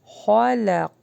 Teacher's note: خا کو ہیوی پڑھیں گے، لام باریک ہوگا، قاف ہیوی پڑھا جائے گا۔